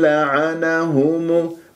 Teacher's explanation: والهاء والميم مضمومة نضم الشفاه فيها